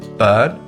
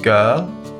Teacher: Technically, it's called the open mid central unrounded vowel. It's very similar to the previous vowel we looked at, the schwa sound We form it by keeping our lips relaxed, our mouth slightly open, and the tongue in a flat position. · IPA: /ɜː/